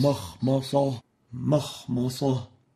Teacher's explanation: velarizing the meme, which means awarding it a tafkhim when it is followed by a velarized letter